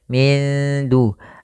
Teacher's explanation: nunnya disamarkan ke da kita namakan dengan bacaan ikhfa